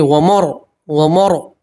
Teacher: را ساکن سے پہلے زبر ہے تو آپ کو موٹا پڑھیں گے، پور پڑھیں گے